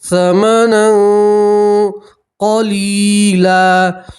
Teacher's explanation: تنوین کا اکفا ہے تو تنوین کی آواز کو ناک میں چھپائیں گے، ایک الف کے برابر گننا کریں گے